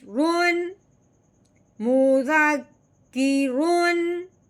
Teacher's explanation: रॉ को बगैर गुन्ने के इजहार के साथ पढ़ना है